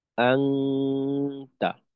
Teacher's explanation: তো এই এই যে সময়টা আমি ধরেন আহ, 2 আলিফ পরিমাণ সময় গুণনা করলাম। আং, আওয়াজটার ধরন অনুস্বারের মতো। আহ, নাক থেকে প্রকাশ পাবে আওয়াজ, মুখও খোলা থাকবে, মুখের থেকেও প্রকাশ পায় কিছু অংশ। আর আমাদের আহ, অবস্থান করতে হবে গিয়ে তায়ের মাখরাজে। · জিহ্বার আগা সামনের উপরের 2 দাঁতের গোড়ার সঙ্গে লাগানো থাকবে পরিপূর্ণভাবে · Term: ইকফার গুন্না